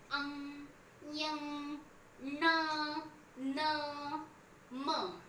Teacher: ये अनुनासिक है, मतलब ये नाक से उच्चारित किए जाती है